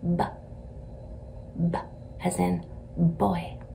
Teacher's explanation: out about this far as quick as you can make it try not to let it have an uh at the end of it as quick as you can possibly make it it's bye as